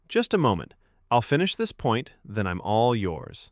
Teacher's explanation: Slower start, soft stress on finish and point and a friendly rise on yours. It keeps confidence without edge. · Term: tone shift